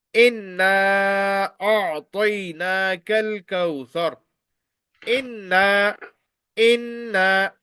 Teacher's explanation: In case of inna on noon mushaddad, you will take this voice into your nose. This is known as gunna.